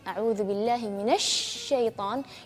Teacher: lebih jelas sifat tafasy-nya lebih kencang angin